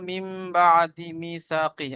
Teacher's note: নুন সাকিনের পরে বা এসেছে, তাই নুন সাকিনের আওয়াজকে মিমের সাথে পরিবর্তন করলে এক আলিফ পরিমাণ গুণ করে পড়বো। একে আহ, আহ, ইকলাব বলে।